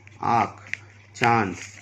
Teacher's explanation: इसका उच्चारण गले और नाक दोनों से होता है। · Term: अनुनासिक